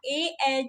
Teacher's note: ए जो है ये कंठ तालव्य है